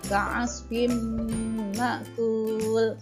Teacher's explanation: Ketika ada nun sukun bertemu dengan mim, ya, cara membacanya masuk meleburkan kasrah tanwin atau seperti diberi tanda tasdid disertai dengan dengung 2 harokat. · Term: idgham bi gunnah